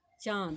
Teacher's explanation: अनुनासिक का उच्चारण स्थान होता है नासिका और मुंह नाक के द्वारा बोला जाता है और वह दोनों की सहायता